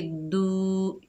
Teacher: दाल के ऊपर पेश, आगे वाव साकिन है, ये वाव मद्दा है, एक अलिफ की मिकदार खींचकर पढ़ेंगे